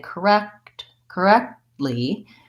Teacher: Americans will often say correct correctly where they don't release that T sound